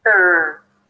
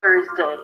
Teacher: So start with the tongue out for the TH and then pull it in for an R. Directly. It's not there, it's not Thor, it's a soft TH, and then you pull it for an R and push your lips forward.